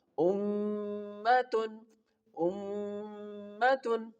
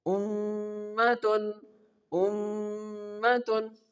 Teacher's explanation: Feel the sound in your nose. If the sound is making the vibration and producing in your nose, it means you are performing the right gunna on the right word.